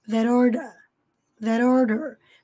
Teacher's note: Percebam que aqui, esse T final de that, emendou com o som do O fazendo o som de R, that order.